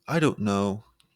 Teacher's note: your pitch Rises to show doubt